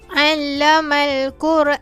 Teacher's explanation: Saya memilih untuk membaca 4 harokat pada huruf alif tersebut sebelum saya matikan bacaan. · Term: mad arid lis sukun